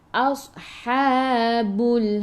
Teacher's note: Ingat huruf sad sifat hurufnya safir, kena bunyikan berdesir